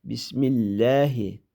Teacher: Bismillah kalimasidagi Allah degan ismning lamini inchga elib o'qiymiz.